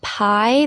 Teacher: in the word pie, there is a diphthong where you slide from I, you feel the vowel move